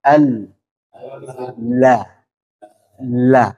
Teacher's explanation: Suaranya tertahan, tapi dia mengalir juga. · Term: tawassut